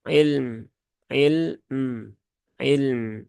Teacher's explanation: lam dan mim ini ini sifatnya sama ya keduanya ee memiliki sifat tawasut maka tunaikan saja kedua-duanya